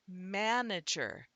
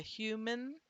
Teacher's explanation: do you hear the difference between manager with the jaw drop and the A sound to human? That there is no vowel sound in the second syllable. It's simply going from the m to the n.